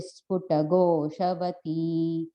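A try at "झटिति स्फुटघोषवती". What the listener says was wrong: And the Aarti and even Narayani, I think in that last line, Jhatiti Sputa Goshavati. There's no is in between. It's sounding like you're saying an is in between, but there's no is in between. Jhatiti Sputa Goshavati.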